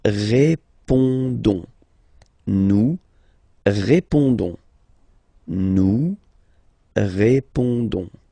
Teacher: Don't pronounce the final S. You only pronounce this on sound.